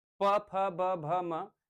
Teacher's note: जब आपके होठ दोनों आपस में स्पर्श करते हैं तब आप प वर्ग के वर्णों को बोल पाते हैं।